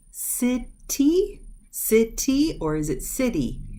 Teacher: when it's in this position between the two vowels, it softens to the D sound.